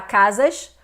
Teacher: se trata da região ali do Estado do Rio de Janeiro em que os cariocas Falam assim chiando né o s